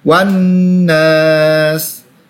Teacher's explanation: Alif lam syamsiyah dan nun berharokat tasydid berhadapan dengan alif sukun, ditekan dan dibaca panjang 2 harokat.